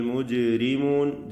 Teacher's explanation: പോലെ ചലിപ്പിച്ച് ഉച്ചരിക്കണം വീണ്ടും മുത്തസിൽ വാജിബ് ജഹന്നൂൻ മുശദ്ദ മണിക്കുക അൽ മുജ്രിമൂൻ ജീമിന്റെ സുക്കൂൻ കൽക്കല നൽകി ശബ്ദം ചലിപ്പിക്കുക